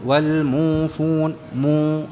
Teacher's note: tidak ada ghunahnya Jadi bukan berdengung